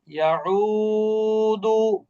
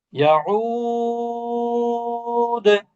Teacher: হম, দালের পেশটা সুকুন হয়ে যাবে। আর যখনই দালের পেশটা সুকুন হয়ে যাবে তখন এটা কিন্তু তিন আলিফ মাদ হয়ে যাবে, মাদ্দে আরজি হয়ে যাবে।